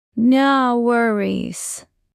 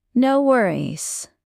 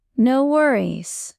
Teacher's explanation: keep your pitch rising slightly. It makes you sound friendly and open.